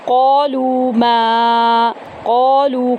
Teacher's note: قاف کو پر پڑھیں گے، 1 الف کے برابر لمبا کریں گے